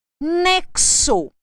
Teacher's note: a letra X apresentando o som de KS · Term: dífono